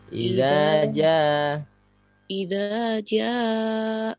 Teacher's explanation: Kepanjangan Bu, za-nya kepanjangan. 2 ketuk aja.